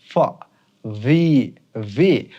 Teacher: এই দুটোর উচ্চারণ আমরা কিন্তু উপরের দাঁত এবং নিচের ঠোঁট দিয়ে পড়তে হবে। উপরের দাঁত, এই যে উপরের দাঁত, নিচের ঠোঁট, তাহলে বলবো আমরা ফ।